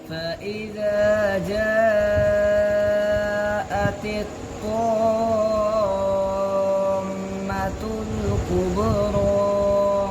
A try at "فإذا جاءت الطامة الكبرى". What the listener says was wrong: अब तो नाक में पढ़ रहे हैं